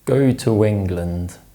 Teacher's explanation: This is known as the weak form and it helps us to stress sentences correctly. However, if the function word is followed by a vowel sound, it doesn't change. Instead, we insert the w sound and use it to link the words together. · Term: intrusion